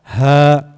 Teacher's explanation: Huruf halak atau huruf yang keluar yang bersumber dari tenggorokan.